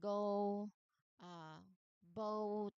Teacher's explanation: That is the O sound. This is the long O vowel sound, often called a diphthong.